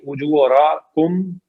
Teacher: اجورکم میں واو مدہ ہے، را موٹی پڑی جائے گی